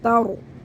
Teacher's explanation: را ساکن سے پہلے زبر ہے موٹا پڑھنا ہے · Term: را کو موٹا